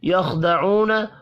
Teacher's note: یخدعون، خا پر پڑھا جائے گا، ساکن ہے، قلقلہ نہیں کرنا۔